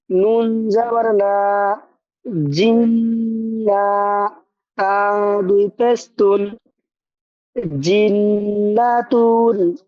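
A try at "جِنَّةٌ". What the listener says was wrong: জি বানান করার সময় একটু নুনে টান হয়ে গেছিল জান্নাত একটু এরকম টান হয়ে গেছিল আবার একটু শোনাই বানান করে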